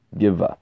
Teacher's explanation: B, when in between vowels, is pronounced like a V, similar to V, but between your lips, like V, Giva, which means gift.